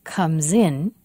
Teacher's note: the final s of comes in has voice it sounds like z with voice